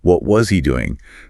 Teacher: The vowel in was reduces to a schwa.